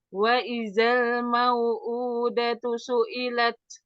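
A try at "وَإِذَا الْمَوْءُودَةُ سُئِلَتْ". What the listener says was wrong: Lebarkan sedikit lamnya. Wa idzal.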